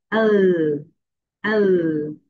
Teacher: নিচে জিহ্বা উপরের দাঁতের সঙ্গে হালকা টাচ করবে। এল, এল। এল সাউন্ডস লাইক লা।